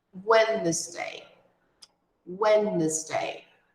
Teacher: nós não pronunciamos a letra D. Ela é silenciosa. Então, nós pulamos da primeira sílaba para a seguinte, sem falar a letra D.